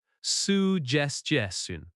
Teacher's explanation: Stress suggestion on the second syllable.